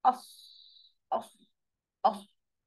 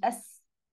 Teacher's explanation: انا بطلع الحرف مفخم مصطحب بهواء، الهواء ده بيملى نفسي، بيملى بقي، بيملى التجويف الفمي